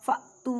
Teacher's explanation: حمزہ ساکن ہے اس وجہ سے جھٹکا دے کے پڑھیں گے